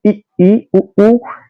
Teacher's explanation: इन वर्णों के उच्चारण में मुख द्वार लगभग बंद रहता है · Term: समृत स्वर